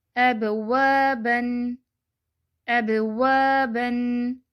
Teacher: با ساکن ہے تو قلقلہ بھی ہوگا۔